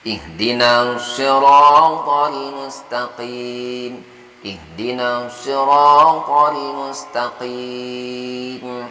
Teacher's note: Jadi qa itu letaknya di tenggorokan bagian atas, bukan di bagian bawah atau tengah, supaya tidak terlalu tebal. Kalau yang kita membacanya di tengah atau di bagian bawah pangkal tenggorokan, jadi terlalu tebal.